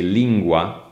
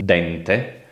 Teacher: if you say lingua (language) then you have a velar sound when you say dente (tooth) then you have the dental sound